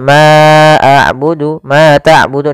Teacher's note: Ma abudu Ma tabudu di sini ada bacaan Mad thii yaitu fathah bertemu dengan alif untuk panjang yang kita panjangkan sepanjang dua harakat